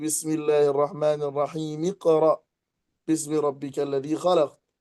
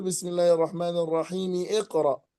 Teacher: فيكسر الميم التي في آخر التعوذ والميم التي في آخر البسملة ويسقط همزة الوصل من اقرأ